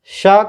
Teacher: तो देखिए स का उच्चारण स्थान है तालु। जीभ के ऊपर की छत जो होती है वो तालु कहलाती है, तो श का उच्चारण स्थान है तालु।